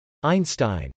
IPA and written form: ˈaɪnstaɪn (einstein)